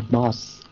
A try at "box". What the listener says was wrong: Yeah, good.